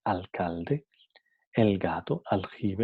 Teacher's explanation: Seguida de velares que, g y j, alcalde, el gato, aljibe, entonces se queda como alveolar.